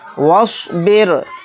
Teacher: رائے مشددہ کے نیچے زیر ہے، تو اس رائے مشددہ کو باریک پڑھیں گے